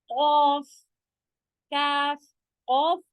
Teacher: ऑफ में बिल्कुल भी खरखराहट जैसी आवाज नहीं रहेगी